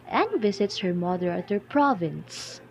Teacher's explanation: the words and visits and her has the high pitch followed by the mother at their which is in the middle pitch